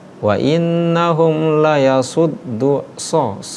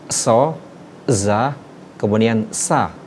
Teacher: Huruf so, za dan sa itu dinamakan sofir, huruf yang berdesis ketika pengucapan penuturan huruf ketiga ini.